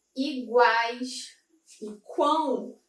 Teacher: Eu tenho uma vogal e duas semivogais. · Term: tritongo